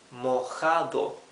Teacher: Mojado, remember that the J in Spanish sounds like a rough H, right? In English the H has a smooth sound. In Spanish it's a rougher sound for the J, right? Mojado.